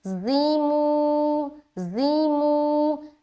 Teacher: زی کو ہم سیٹی کی طرح ادا کریں گے سخت طریقے سے